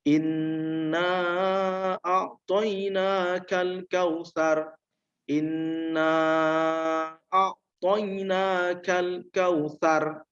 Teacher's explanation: cara membacanya adalah dengan mendengungkan, kemudian panjang dengungannya adalah 2 harokat ya, atau 1 alif. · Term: gunnah musyaddadah